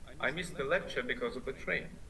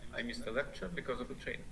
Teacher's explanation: I missed the lecture goes up because of the train goes down, and this tells us that there's something going on between the two phrases, and they are connected to each other.